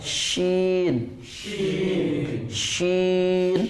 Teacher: Tafashi itu artinya bergemuruh di mulut. Maka mengucapkan huruf shin harus bergemuruh. Kalau nggak bergemuruh berarti bisa juga kesin.